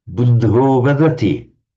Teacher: In certain circumstances, this ah becomes an o in Sanskrit. Most particularly before a voiced consonant.